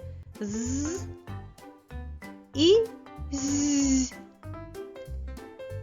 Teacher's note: горло дзвенить вібрує звуки з та з приголосні дзвінки